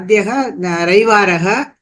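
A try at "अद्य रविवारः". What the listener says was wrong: Adya Ravivaraha. Adyaha illa Adya. Not Adyaha, Adya Ravivaraha.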